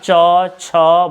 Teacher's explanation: आपका जीभ जो है ऊपर से तालु से आपका सटेगा